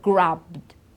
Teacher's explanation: You see, it's a d, it's not a t, and it's not a id. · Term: the D sound